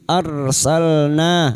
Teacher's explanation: Ra sukun yang didahului fathah dibaca tafkhim. Arsalna, na fathah disusul alif, dua harakat mad thabi'i.